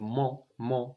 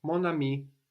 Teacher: The N pops back up